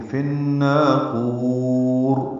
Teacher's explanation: فن میں ادغام شمسی ہے مع الغنہ ، فن نا الف مدہ ہے، دو حرکات لمبا کریں گے،